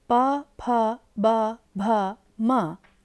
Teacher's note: प वर्ग प, फ, ब, भ, म का स्थान ओष्ठ है